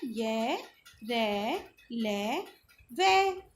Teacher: इन व्यंजनों का उच्चारण स्वर तथा व्यंजन के मध्य का सा होता है। तो उच्चारण के समय जिभ्या मुख के किसी भाव को स्पर्श नहीं करती। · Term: अंतस्थ व्यंजन